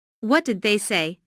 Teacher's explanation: Notice how say is emphasized, but the intonation falls at the end of the word. This is a what question, so the intonation falls at the end.